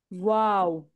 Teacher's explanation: का नाम क्या है वाओ हां तो क्या हो रहा है पहले होठ क्या हो रहे हैं गोल हो रहे हैं फिर वापस से यानी फिर फ्लैट होके वापस गोल हो रहे है